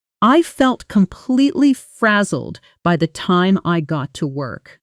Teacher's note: Notice the double consonant sound in the middle. Z-L, which native speakers pronounce with a soft, quick buzz. Fra-zelled, not fra-zelled.